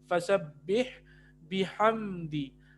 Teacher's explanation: یہاں پہ اظہار شفوی ہو رہا ہے، میم ساکن ہے اس کے بعد دال ہے